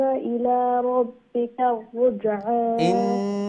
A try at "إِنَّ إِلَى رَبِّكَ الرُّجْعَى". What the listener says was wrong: Make sure you pronounce the nun gunna a bit more than what you did, okay? Inna